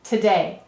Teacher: we often say today with a schwa sound any vowel may say uh or i in an unstressed syllable